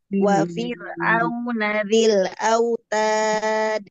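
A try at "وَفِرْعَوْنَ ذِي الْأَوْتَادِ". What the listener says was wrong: Lamnya jangan mantul. Wa fir'auna dzil autad.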